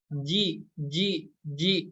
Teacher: huruf Jim tempat keluarnya dari tengah lidah kita menempel ke tengah langit-langit atas